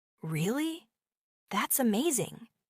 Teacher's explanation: when surprised, they might say, Really? That's amazing. With a rising tone.